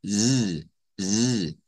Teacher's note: la z que está acá es un sonido alveolar vibrante